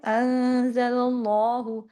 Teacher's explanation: آگے اللہ کے نام میں جو لام ہے اس کو ہیوی کرنا ہے. کیوں؟ کیونکہ اللہ کے نام سے پہلے زبر ہے.